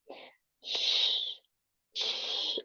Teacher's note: con la t y como con una s así larga sh es un sonido sordo y palatal porque el cuerpo de la lengua toca el palatal